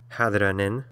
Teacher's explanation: a diacritical Mark here that you see in the word hadin the stress falls on that first vowel there instead of the second one as would be the normal rule so we have this little